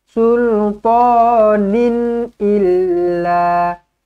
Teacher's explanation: Nun kosong bertemu dengan Sin ikhfa Hakiki dengungkan dua harakat · tanwin selari bertemu dengan Hamzah izhar halq jelas dan terang